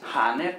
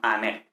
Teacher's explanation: Entonces, aner, tenemos aquí, que es este espíritu suave, entonces aner, ¿vale? Entonces, no es haner, no, sino aner, no se aspira